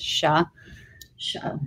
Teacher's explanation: it may be pronounced show in some other parts of Ireland but in the South it's pronounced sha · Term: Munster Irish